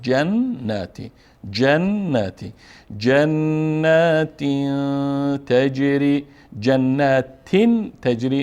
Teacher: جنات تجري اینجا نون مشدد هست و به مقدار دو حرکت فشار میتیم، یعنی دو حرف تلفظ میشه